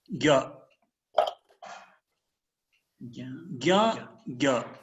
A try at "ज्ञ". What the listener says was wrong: You are using your nose, you are saying, है ना?